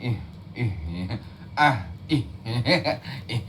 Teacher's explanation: H besar dari pangkal tenggorokan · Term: Hamzah